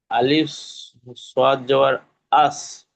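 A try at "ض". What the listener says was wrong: সোয়াদ নেই, এটা দোয়াদ আছে, তাহলে সোয়াদ থাকলে আস হতো, দোয়াদ থাকলে কি হবে?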